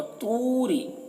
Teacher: तू को थोड़ा खींचेंगे, वाव मद्दा है। रा को बारीक पढ़ेंगे, रा के नीचे ज़ेर है तो बारीक पढ़ेंगे।